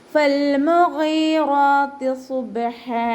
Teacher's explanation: സ്വാദ് ഇസ്തിഅലാൻ്റെ ലെറ്ററാണ്, അപ്പോൾ ഇതിനെ ഉയർത്തിയിട്ട് ഉച്ചരിക്കുക. ബ കൽക്കലയുടെ ലെറ്ററാണല്ലോ, അപ്പോൾ സുക്കൂനായതുകൊണ്ട് നമ്മൾ ഫുൾ സുക്കൂന് കൊടുക്കുക.